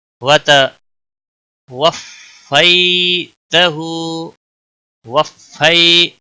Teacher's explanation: یا لین ہے، تھوڑا نرمی کے ساتھ کھینچ کر پڑھیں گے